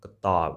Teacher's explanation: So it's ending with ub sound, it's schwa sound